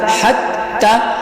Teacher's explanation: اب یہاں پر دو چشمی ہا سینے سے نکلے گی اور پھر سا جو ہے نرم حروف میں سے ہے، تو اس کو زبان کی نوک سے ہم ادا کرنے کی کوشش کریں گے۔ اب ہا حتی، ہا جو ہے حلق سے نکلنے والی ہا ہے